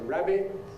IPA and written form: ˈræbɪʔ (rabbit)